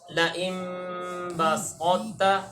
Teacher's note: طا کی صفت استعلاء اور اطباق کو باقی رکھ کے ادغام کریں گے تا میں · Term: ادغام میں ناقص